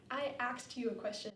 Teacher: in African-American English, the word ask is often pronounced axe with the C and the S sound switched